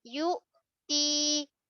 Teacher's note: Hamzah jaga sifat syiddah. Okey, tertahan dari segi aliran suara.